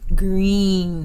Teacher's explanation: this common monophthong becomes a diphthong in Canadian speech because of the sliding movement · There is extra sliding movement required to get around the vowels in the word green, for example, because we're hearing the E and the Y.